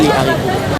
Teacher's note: Mais haricot, on ne peut pas faire de liaison vu que c'est un H aspiré.